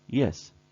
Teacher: We glide smoothly and quickly from e or I towards the sound e